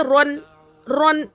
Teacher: تو اب یہاں پر تو یہ رن، رن جلدی پڑھنا ہے، رن یعنی نون کو ظاہر کرنا ہے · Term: اظہار